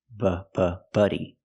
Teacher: buddy has the short uh sound like cup and up it's closed and relaxed